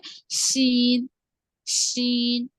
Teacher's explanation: हुरूफ शजरिया, middle part of the tongue, ऊपर तालु को लगने से अदा होगा, वसतुल लिसान।